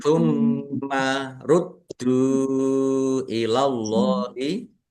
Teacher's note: mimnya ada tasdidnya dibaca gunah atau mendengung ditahan biar tampak mendengung · Dalnya ada tasdidnya dibaca dobel ditekan biar tampak dobel. Rudu dal dom dah domah wau sukun mad thobi'i.